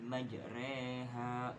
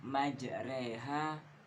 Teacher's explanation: Jadi imalah yang dimaksud bacaan imalah tuh pada bacaan majreha. Jadi sewaktu membaca kalimat ini dengan merubah a pada ro menjadi e, yakni majreha bukan majroha.